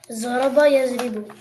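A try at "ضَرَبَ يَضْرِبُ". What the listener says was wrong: Okay, don't say zaraba. Daraba. I just told you daraba.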